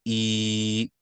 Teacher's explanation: this next one is the associated with a Yah which comes in a double elongated sound, right? A double elongated sound making the sound E or two counts E. So double the length of E.